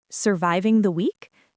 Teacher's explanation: Because it's a question, your voice needs to naturally rise at the very end, but it should not sound like a serious medical inquiry. · Listen to how my voice goes up on the word week. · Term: intonation